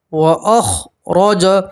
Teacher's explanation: را کے اوپر زبر ہے تو را کو بھی آپ موٹا پڑھیں گے، پور پڑھیں گے